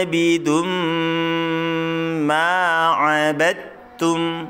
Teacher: Jadi kita tahan dengungnya 2 atau 3 ketukan ya.